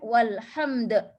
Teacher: Ada qalqalah kubra juga di hujung ya.